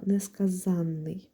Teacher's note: У нас є слово несказанний, де наголос падає на літеру А, тобто на суфікс ан є наголошеним